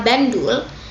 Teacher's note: N yang merupakan nasal apikoalveolar berubah menjadi nasal apikopalatal disebabkan oleh pengaruh secara regresif dari bunyi D yang sebelumnya merupakan letup apikopalatal